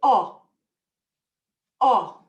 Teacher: the letter O in Spanish is never a long O like it is in English. It's a shorter sounding, an O.